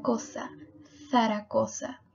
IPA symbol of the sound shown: θ